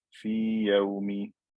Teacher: I have to make the ya clear and a regular med letter.